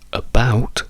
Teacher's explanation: Quando invece andiamo su about, col fatto che la sillaba accentata è la seconda, in quel caso lì quella A sì che può essere pronunciata con una schwa. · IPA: /ə/